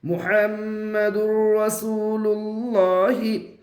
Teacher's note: میم کے اوپر پیش ہے، پیش کو جلدی پڑھے، تھوڑا بھی نہ کھینچے، معروف پڑھے، مجہول آواز سے بچے۔ ہا کے اوپر زبر ہے، زبر کو جلدی پڑھے، تھوڑا بھی نہ کھینچے۔